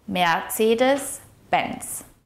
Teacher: the emphasis of the word should be placed on the first syllable of Mercedes and the last syllable of Benz.